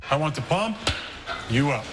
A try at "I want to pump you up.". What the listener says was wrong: We want to pump you up like that. You put the emphasis on the wrong syllable.